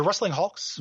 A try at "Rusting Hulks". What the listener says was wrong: Rusting Hulks. It sounds like you're saying wrestling.